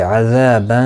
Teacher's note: تنوین کے بعد حروف اخفا کا شین آیا ہے، اخفا حقیقی ہوگا، گنہ کے ساتھ پڑھیں گے. دی یا مدہ ہے، ایک الف کی مقدار کے برابر کھینچ کر پڑھیں گے.